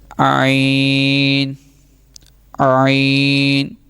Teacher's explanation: حلق کے درمیان والے حصے سے یہ ادا ہوگا. عین، حلق کے درمیان، عین نہیں پڑھنا.